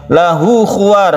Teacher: Kemudian lahu khuwar, haknya ini disebut dengan hak dhamir yang kita namakan hukumnya itu adalah mad silah qasira. Mad silah qasira dibaca satu alif karena dia itu diapit oleh dua huruf hidup.